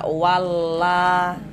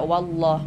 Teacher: lafaz Allahnya itu kita tebalkan, kita baca tabkhim